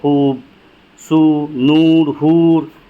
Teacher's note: واو معروف، یہ وہ واو ہے جو کھینچ کر پڑھی جاتی ہے اور اس پر پیش کی علامت ہوتی ہے، جیسے خوب، سو، نور، حور۔